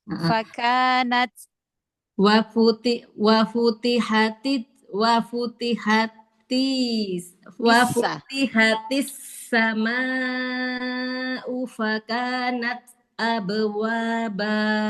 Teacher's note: Taknya kasih hamasnya tampakkan. Jadi biar nggak hilang taknya. Fakanat nat kasih hamasnya.